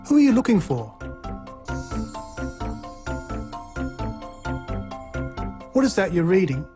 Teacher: Questions with who, what, when, why, and how also use this low or falling tone.